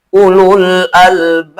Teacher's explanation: Babnya dipanjangkan, ada disukun, tapi kedepannya ada huruf qalqalah dipantulkan. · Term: mad arid sukun